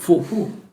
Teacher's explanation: quando dici hu, quel h è quasi una F.